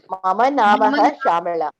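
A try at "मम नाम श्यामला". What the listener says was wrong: Mama Nama Shyamala. Nama only. Namaha na. There is no visarga there. It is Mama Nama Shyamala.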